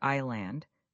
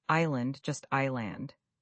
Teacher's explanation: Many people want to pronounce the S is land, but the S is completely silent